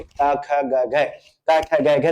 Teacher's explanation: तो जैसे हम का उच्चारण करेंगे, का ख ग घ, का ख ग घ, तो उच्चारण करेंगे तो कहाँ पे होगा, कंठ से उच्चारण होगा